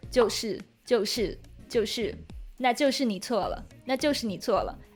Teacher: the mouth movement for compound vowels like 错 is also not as obvious as in 普 通 话 · in Taiwanese accent, there are not so many neutral tones